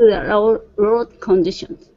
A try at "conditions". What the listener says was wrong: Now, instead of saying conditions, it's kun. C-U-N. Kun.